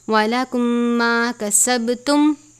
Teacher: میم ساکن کے بعد دوسری میم ہے، ادغام شفوی کا ہی قاعدہ لگے گا یعنی غنہ کرتے ہیں